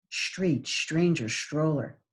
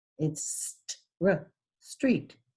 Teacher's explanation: So that means your articulation is not according to standard American English because there's no sh in a street